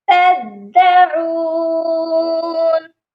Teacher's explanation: دال مشدد ہے، اس کو سختی سے پڑھنا ہے